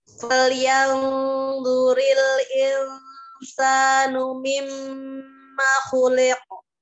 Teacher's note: Jadi disempurnakan ya. Gunnah di mim tasdid itu sempurna ya